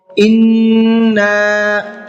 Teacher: नून में गुन्ना भी करना है और साथ साथ खींच करके भी पढ़ना है। खींच करके इसलिए पढ़ना है कि यहाँ पर भी वही कायदा है जो भी आपको ऊपर बताया गया है।